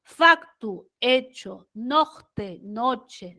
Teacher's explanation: Y este grupo consonántico CT evolucionó a la CHE